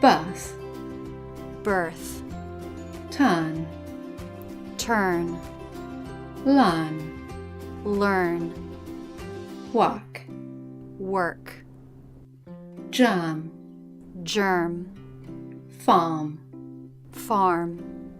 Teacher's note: when the letter R is in the middle position in a monosyllabic word and after a vowel in British English we tend to drop it